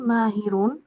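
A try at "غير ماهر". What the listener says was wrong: গৈরু মাহিরুন হবে না রিন হবে? রিন হবে? গৈরু মাহিরুন হবে না রিন হবে? হ্যাঁ হ্যাঁ, একটু খেয়াল করে বলবেন।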